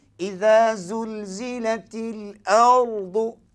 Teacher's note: Hamzah tak boleh tebal. Yang tebal hanya ra.